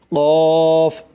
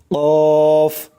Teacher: জিহ্বার গোড়া তার বরাবর উপরে তালুর সঙ্গে লাগাইয়া উচ্চারিত হয় কফ, মোটা করে কফ। খেয়াল করবেন, জিহ্বার গোড়া তার বরাবর উপরের তালুর সঙ্গে লাগাইয়া, জিহ্বার গোড়া তার বরাবর উপরে, মানে উপরের যে তালু আছে সেই তালুর সঙ্গে লাগাইয়া উচ্চারিত হবে কফ, শক্ত করে কফ।